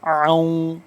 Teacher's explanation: حلق کے درمیانی حصے سے اور ذرا کھینچ کے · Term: عین